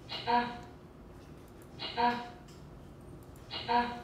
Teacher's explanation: so it's a palatal alveolar with some retraction and it's ejective